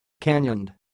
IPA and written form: ˈkænɪənd (canioned)